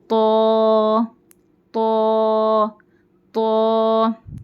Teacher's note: اس کو نا تو نہیں پڑھنا، نون کے آواز ناک سے نکال کے نہیں پڑھنا اس کو، اور نہ تا پڑھنا ہے اس کو موٹا اور نرم پڑھنا. تو تو تو زبان کی نوک اوپر کے دانتوں کے جڑوں کو لگانا ہے